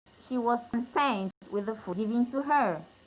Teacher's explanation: The stress is on the second syllable to show that it's a satisfaction.